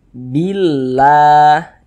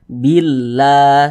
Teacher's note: ada lafaz Allah sebelumnya ada harakat kasrah maka lafaz Allah ini kita baca tipis kita baca tarqik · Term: tarkik